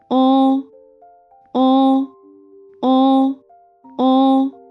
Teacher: 啊啊 With your mouth opens to a medium width, lips rounded, and the tongue is raised slightly toward the back. 哦 With your mouth is also medium, tongue raised slightly and pulled back.